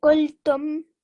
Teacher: because you did the lam sakin, you didn't linger on it. You also didn't rush. The meme at the end, don't drag it out. It's just a tum.